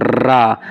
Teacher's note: रा बोल के देखो रा वाइब्रेशन हो रहा बस इसी को प्रक पित कहते हैं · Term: लुंठित